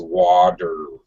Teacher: Americans have what's called a fast D or a flapped D when a T, the letter T, is surrounded on either side by a vowel.